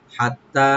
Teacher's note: হাটাকে right দিবেন গলার মাঝখান থেকে, তাটাকে ডাবল করে ওপেন করে 3 আলিফ টানবেন এখানে মধ্যে মুনফাসিল।